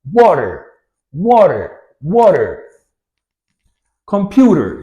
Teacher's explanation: it makes it in between something in between d and r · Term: flap T